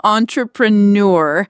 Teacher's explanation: gives it that distinct aw sound at the beginning, and the stress falls on the last syllable.